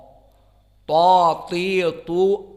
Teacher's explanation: atrof lisan bertemu dengan usul.